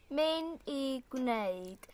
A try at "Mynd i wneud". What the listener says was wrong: Oh, and you're hearing actually not putting the little softening in that she's meant to do there. Mynd I wneud.